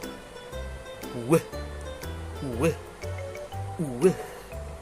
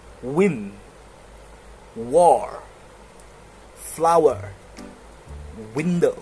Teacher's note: Well, how you say it is like w. So you move your lips forward first, and then you stretch it out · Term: bilabial approximants